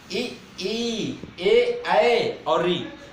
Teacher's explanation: अग्रभाग से हमेशा उत्पन्न होते हैं, जीभ के आगे वाले भाग से